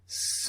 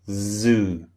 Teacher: So unvoiced is s the first sound. Voiced is zz, the second sound.